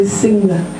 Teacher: Now I think you do have this sound, but you wouldn't get it at the end of a word like sing. So most Italians would say singa, with an extra vowel sound on the end, because it doesn't occur at the end.